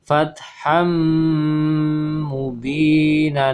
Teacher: jadi suara tanwinnya hilang berubah menjadi lebur ke huruf mim dan disertai dengan pengguna yang ditahan dua harokat ataupun tiga harokat